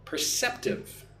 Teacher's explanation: Put the stress on the second syllable, cep.